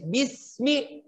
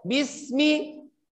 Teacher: Huruf sin harus dibaca dengan sempurna. Jadi bunyinya bismi. Betul-betul membacanya dengan tipis.